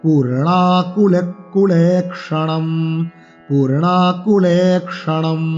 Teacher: পুতে দীর্ঘস্বরের টান, নাতে টান এবং ন মূর্ধন্য